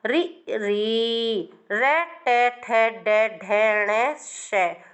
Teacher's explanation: इनका उच्चारण स्थान मूर्धा है